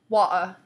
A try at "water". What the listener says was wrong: He doesn't pronounce the T. Water.